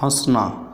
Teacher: नाक और मुख दोनों से हवा लगती है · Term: अनुनासिक